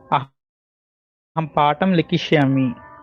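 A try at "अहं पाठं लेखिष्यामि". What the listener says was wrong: లిఖిష్యామి ఆర్ లేఖిష్యామి? Preferable గా లేఖిష్యామి. అక్కడక్కడ లిఖిష్యామి కూడా ఉంది, కానీ ఎక్కువ శాతం లేఖిష్యామి అనే ఉందట. సో అందరం లేఖిష్యామి అని నేర్చుకుంటాం. అహం పాఠం లేఖిష్యామి.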